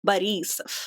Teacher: So you put the emphasis on the E.